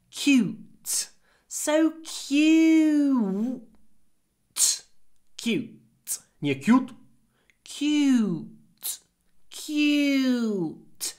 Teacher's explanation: try to say cute, then a little pause, and then t.